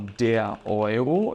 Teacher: E esse ditongo, ele vai ter o som de oi, bem aberto, tá? Então, quando eu falo der Euro, eu estou falando do euro, é a moeda, tá?